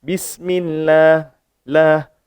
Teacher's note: Jadi bismillah, bismillah, millah. Sebelum kalimah Allah ni ada mim dari bawah, jadi dibaca dengan nipis.